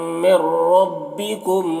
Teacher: رم میں را کو پر پڑھیں گے اور رم یہاں پر ادغام ناقص ہو رہا، غنہ کے ساتھ میں پڑھیں گے